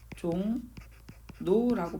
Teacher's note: 종노라고 발음된다는 거죠. 리을이 니은으로 바뀌었어요.